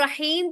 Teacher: ह जो है वो वस्ता उल हलक वाला ह है। ठीक है? जो हमने हलक के बाप के अंदर पढ़ा था हरूफ हलकिया के अंदर।